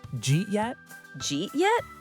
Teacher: It sounds like one strange word. The did you becomes a J sound, J, and eat links right into it, jeet yet.